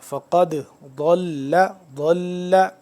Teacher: بتاتا رہوں ساتھ ساتھ یہ ضاد کا اور دوسرا ضا کا ضاد کا مخرج ہے زبان کی بائیں کروٹ کو آپ اوپر والی داڑوں کے ساتھ جب ٹچ کریں گے تو ضاد صحیح طرح سے ادا ہوگا فقد ضل سواء السبیل واو الف مد زبر وا 4 سے